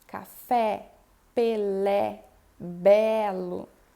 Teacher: eu pronuncio com a boca bem aberta. Por exemplo, café, ele se aproxima do A. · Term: E aberto